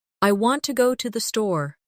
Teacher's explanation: The stress is on want and store. The words to and the are much softer.